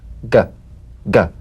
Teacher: place the back of the tongue in gentle contact with the soft palate let the tongue spring away play this drum beat on the springing action of the back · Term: voiced tongue back plosive consonant